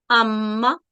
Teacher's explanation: होंठों को जब आपस में मिलते हैं तो मीम का यहाँ पर मखरज है और मीम की अदायगी होंठों के को आपस में मिलाने से की जाती है। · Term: मीम का मखरज